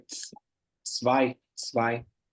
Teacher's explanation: o fonema do Z, que tem um som de TS. Fica ts, zwei, zwei.